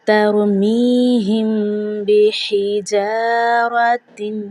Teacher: میم ساکن کے بعد حرف با ہے جو کہ اخفاء شفوی کی مثال ہے، یعنی کہ یہاں پر ہم گنہ کریں گے